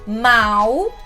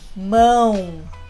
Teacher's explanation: É só para sentir suavemente. Quando você fala mal, quase não tem vibração. Mas se você fala mão, caramba, tem muita vibração aqui. · Percebeu como esse A é bem nasal? Não é A, é E de fato você sente uma vibração aqui no seu rosto, nessa região.